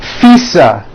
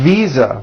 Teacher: I said visa with an unvoiced F. I should have said visa with a voiced V.